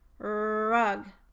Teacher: A constriction between the tongue root and the posterior pharyngeal wall is also essential for correct pronunciation of this sound. Most talkers also round their lips when producing the R consonant.